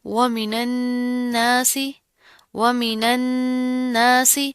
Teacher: نون کے اوپر تشدید آ رہی ہے، غنہ کریں گے، یعنی کہ آواز کے ناک کے اندر آواز پیدا کریں گے